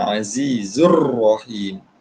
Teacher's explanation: lam tu dimasukkan. Jadi lam tak dibaca, dimasukkan kepada huruf selepas dia. · Kaedah dia tak boleh kita bunyikan lam dekat ar-rahim dulu. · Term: lam idgham, Lam idgham